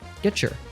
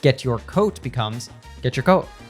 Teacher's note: when a t sound is followed by a y, they blend together into a ch sound